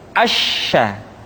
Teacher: Sya dikeluarkan dengan cara mengangkat tengah lidah kita ke langit-langit. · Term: huruf sya